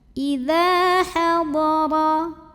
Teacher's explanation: Huruf ra dibunyikan secara tafkhim, sebab ra-nya berbaris fathah. Cara bacanya ditebalkan, pangkal lidah dinaikkan.